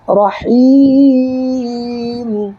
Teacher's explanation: اچھا، دوسری بات کہ یہاں پر جب وقف کریں گے، رکیں گے اس جگہ، تو یہاں دیکھیے میم کے نیچے 2 زیر ہے، زیر کو نہیں پڑھنا ہے بلکہ میم پر بھی ساکن دے دینا ہے